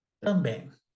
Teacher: Ele pode ser crescente e decrescente, assim como ele também pode ser um ditongo fonético, do tipo nasal